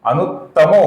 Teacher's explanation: अनुत्तमः का आगे मृदु व्यंजन आने की वजह से विसर्ग का ओ हुआ है